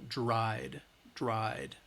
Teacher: it's not that id, we're not adding an additional syllable, it's still one syllable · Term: D sound